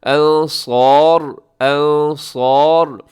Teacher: وقف کریں گے تو را ہوگا پر